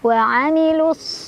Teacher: Wa amilus mad tabi'i karena ada fathah berdiri di atas huruf sad, dibaca panjang 2 harokat.